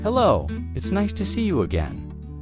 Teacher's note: see you often sounds like see ya in fast speech